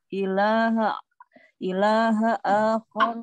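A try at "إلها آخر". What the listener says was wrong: ilahan tanwin ilahan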